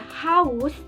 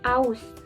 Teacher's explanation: Lalu ada haus menjadi aus huruf h nya juga dihilangkan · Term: pengilangan fonem